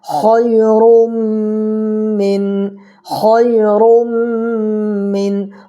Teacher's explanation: خا کو پور کر کے پڑھنا ہے، اس لیے حروف مستعلیہ میں سے ہے۔ یا ساکن سے پہلے خا کے اوپر زبر ہے، تو یا ساکن سے پہلے زبر ہو تو یالین ہوگا، اس کو نرمی کے ساتھ ادا کرنا ہے۔